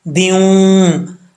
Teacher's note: دو زیر کی تنوین کے بعد واو آ رہا ہے، یہاں پہ ادغام جار ملون ہوگا، یعنی غنہ کیا جائے گا